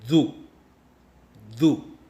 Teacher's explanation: मैंने तो ZU कहा गले के आवाज़ के साथ, मगर आपको सुनाई दिया होगा DU।